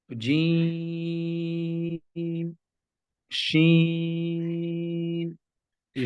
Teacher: زبان کا درمیان اور تالو کے درمیان سے ادا ہوتے ہیں. یہاں پر وسط زبان جب بالمقابل اوپر کے تالو سے لگے تو جیم شین یا ادا ہوتا ہے. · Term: حروف شجریہ